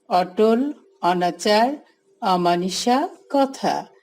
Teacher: অধ্বনির বিবৃত উচ্চারণে চোয়াল বেশি ফাঁক হয়, ঠোঁট তত বাঁকা বা গোল হয় না।